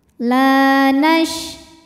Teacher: Cara bacanya, lam dipanjangkan 2 harokat. La nash, shinnya punya sifat namanya tafashi ya, yang tidak memiliki lawan, artinya menyebarkan angin di dalam mulut.